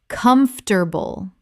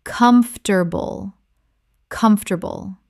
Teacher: This is only 3 syllables in natural speech, not 4.